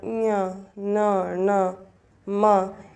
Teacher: इन व्यंजनों के उच्चारण में वायु नाक से निकलती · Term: अनुनासिक व्यंजन